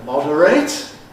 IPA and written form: ˈmɒdəreɪt (moderate)